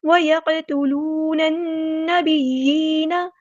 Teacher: قاف ساکن کو ہم نے یہاں پر ہلانا ہے، قلقلہ ہو رہا ہے